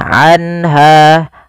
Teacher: Yaitu cara membacanya adalah suara nunnya dijelaskan suara nun sukunnya, anha, dan tidak boleh ditahan, anha. Kemudian pada lafal ha ada mad tabi'i yaitu fathah bertemu dengan alif. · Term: izhar halqi